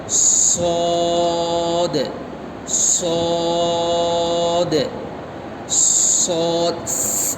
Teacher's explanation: صاد میں جو ہے سیٹی کا آواز آنا ہے